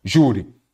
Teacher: A sílaba forte é a penúltima, ela é uma paroxítona terminada em I.